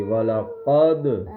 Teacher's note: دال کے بعد میں قلقلہ آواز لوٹے گی